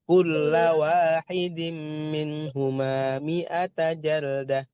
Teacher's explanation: Kulla wahidin, la nya dipendekkan.